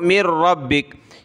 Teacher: نون ساکن کو نہیں پڑھ رہے، میم کو را کے ساتھ ملا لیں، مر۔